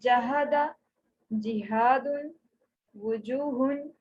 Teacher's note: ایک ہا جو کہ اقصی حلق سے ادا ہوتا ہے، اور دوسرا جیم جو کہ وسط لسان سے ادا ہو رہا ہے